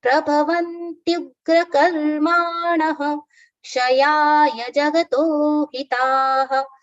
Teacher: there's a visarga after na, which is pronounced as ha.